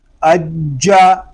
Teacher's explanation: جیم یہ حروف قلقلہ میں سے ہے، اس کو جماؤ کے ساتھ ادا کریں گے. اس کا جو مخرج ہے وہ زبان اور تالو کا درمیان والا حصہ ہے، تو تالو اور زبان کا درمیان والا حصہ آپس میں ملائیں گے، ٹچ کریں گے، تب اس کی آواز صحیح آئے گی.